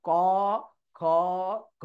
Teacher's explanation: কণ্ঠটা কাঁপছে। তো ক বর্গ হয়েছে কণ্ঠ থেকে